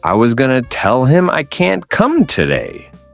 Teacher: A native speaker emphasizes was, tell, can't, today. Everything else gets compressed. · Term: stress and rhythm